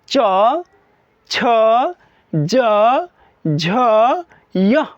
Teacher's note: च वर्ग का उच्चारण स्थान तालु होता है। जैसे आप च, छ, ज, झ, यह बोलते हैं तो उस वक्त आपके जो अंदर से वायु निकलता है, जो आप सांस जो लेते हैं, जो ऑक्सीजन आप बाहर छोड़ते हैं, वह ऑक्सीजन जो होता है ना वह तालु से टकरा करके और वॉइस को क्रिएट करता है च, छ, ज, वाले।